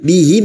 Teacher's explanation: Bihim mim sukun bertemu hamzah idhar safawi, mim sukun dibaca jelas tanpa mendengung